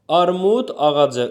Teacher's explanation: Özündən sonra sait gəldiyinə görə d yazıldığı kimi tələffüz olunur.